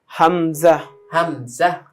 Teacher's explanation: হলকের শুরু থেকে হামজা